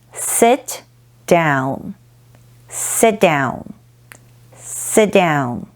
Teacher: In addition to these, there's also deletion, which is to drop or delete the consonant sound, usually at the end of a syllable rather than at the beginning. Sit down is an example of deletion because the T in sit is dropped